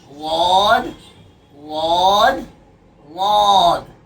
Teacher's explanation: ये जो हमारी ज़बान है ٹھیک ہے، ایک زبان کا ایک سائیڈ ہے، یہ والا زبان کا سائیڈ والا حصہ، چاہے رائٹ میں چاہے لیفٹ میں، آپ کو جہاں سہولت ہو، زبان کا جو سائیڈ والا حصہ ہے جس کو ہم زبان کی کروٹ کہہ سکتے ہیں، زبان کا سائیڈ والا حصہ اوپر کے داڑوں کی جڑ میں لگے گا۔